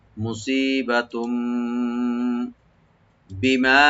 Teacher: তানভিন আছে, দুই পেশ ছিল এখানে, দুই পেশ আছে এখানে, তো যেহেতু তানভিনের পরে এখানে বা আসছে, আমরা এখানে তানভিনটাকে মিমের সাথে চেঞ্জ করে আমরা গুণ সহকারে পড়বো , এটা একলাপ হয়ে যাবে মুসিবাতুম বিমা, বি বলবো, মা ওপেন